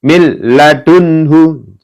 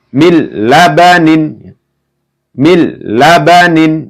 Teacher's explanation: Jadi langsung ketika ada nun sukun atau tanwin ya bertemu dengan huruf lam, ra, maka masuk dengan tidak mendengung.